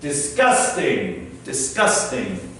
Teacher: And disgusting with the stress after the first syllable.